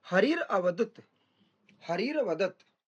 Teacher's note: विसर्गों को र हो जाएगा और र में बाद वाला अ मिल जाएगा